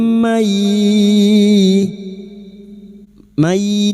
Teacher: Masuk dan mendengung. Masuk ke huruf ya dan mendengung selama tiga harakat. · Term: Idgam big ghunah, idgham bi gunnah